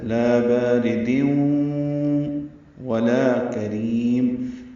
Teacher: حرکات لمبا ہے، را باریک پڑھیں گے زیر کی وجہ سے، تنوین کے بعد واو آنے کی وجہ سے ادغام ناقص ہے